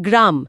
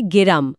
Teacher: গ প্লাস র, এটা হয়ে যায় গেরাম, মাঝে এ এলো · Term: মধ্যস্বরাগম